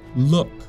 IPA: luk